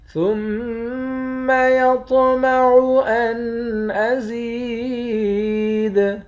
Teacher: میم مشدد پر غنہ کریں گے، طا کو موٹا بھی پڑھیں گے، طا موٹے حرف میں سے بھی ہے اور قلقلے والے حرف میں سے بھی ہے۔ · زا کو یا کے ساتھ ملا کر یا کو ایک الف کے مقدار کھینچیں گے، یا حروف مدہ ہے۔ آخر میں دال ساکن ہے، جب یہاں وقف کریں گے تو دال پر قلقلہ کریں گے۔ کلا انہ کان لآیاتنا عنیدا۔